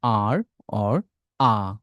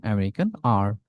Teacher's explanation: আর এর দুইটা উচ্চারণ আর, অর, আ। British আ, আমেরিকান আর